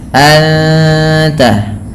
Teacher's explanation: Kemudian anta ada ikhfa hakiki, suara nunnya disamarkan kepada huruf ta dan ditahan bunyi dengungannya